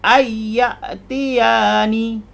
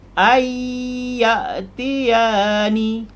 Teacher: masuk tanpa dengung tapi yang betul masuk dan dengung